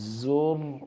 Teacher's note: را ساکن ہلے نہیں، اور زور بولڈ بھی ہوگا، موٹا کریں گے